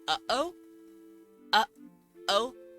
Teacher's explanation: that catching your throat is called a glottal stop